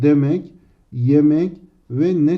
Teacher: e sesini daraltarak iyiye dönüştürmüştür y kaynaştırma harfi o yüzden burada da ünlü daralması vardır bunu